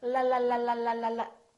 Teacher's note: the L and say lalala what's your time doing la lalala it's going up and down right behind your upper teeth